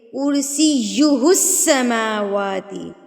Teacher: إِلَّا بِمَا شَاءَ وَسِعَ كُرْسِيُّهُ السَّمَاوَاتِ، کرسیُّ یا کے اوپر مد وہ تشدید ہے، تو اس کو ہم کیا کریں گے، مضبوطی سے پڑھیں گے